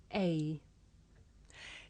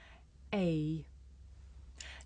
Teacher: The shape the mouth makes changes from the beginning of the sound to the end. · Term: diff thong